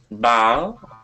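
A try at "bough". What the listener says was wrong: Bow, yes.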